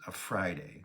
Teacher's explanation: first syllable is stressed